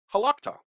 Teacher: It kind of goes up in the middle.